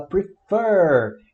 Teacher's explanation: Então a gente tem o verbo prefer, a gente fala prefer e não prefer. Prefer, a sílaba tônica é a fer, é a última e ela é sanduíche de vogal, ó, CVC, R, E, F, né?